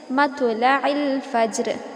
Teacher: تو یہ حرف اگر کسی کلمے کے کسی جملے کے بیچ میں آتا ہے تو یہاں پر بس ہم لائٹ قلقلہ کریں گے. یہاں پر نہ ہیوی قلقلہ ہوگا نہ میڈیم، بلکہ ہلکا پھلکا سا لائٹ قلقلہ